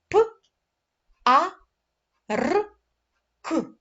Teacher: перший звук п - це твердий приголосний